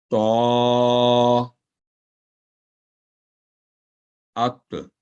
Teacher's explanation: زبان کی نوک کو اوپر والے دانتوں کے مسوڑوں کے ساتھ لگانے سے یہ حرف ادا ہوتا ہے اور زبان کا درمیانی حصہ اوپر اٹھاتے ہوئے ہمیشہ بھاری آواز میں ادا ہوتا ہے. جیسے تو، ات، کلکڑا ہوگا، ات، تو یہ تا نہیں ہوگا، تو، تی، تو.